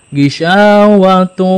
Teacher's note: Tunnya dimasukkan ke waw, idgham itu memasukkan ya. N-nya dimasukkan ke huruf waw dan ada gunnah gitu. Gunnah itu rumusnya masuk ke rongga hidung. Al-khayshum, rongga hidung. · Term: idgham bi gunnah